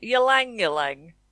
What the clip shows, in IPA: ˈjɛlæŋ,'jɛlæŋ